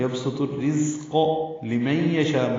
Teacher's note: زا تیز صفیر کی آواز سے ادا ہوگا